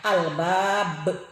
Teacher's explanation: Liulil albab, hukum bacaan qalqalah kubro, sebab huruf qalqalah diwakofkan dan berada di ujung kalimat. Cara membacanya akhir huruf ba dipantulkan, agak berat ya, albab. Alladzina alif lam samsiyah dan mad asli.